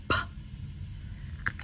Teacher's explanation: It sounds like a puff of air coming out of your mouth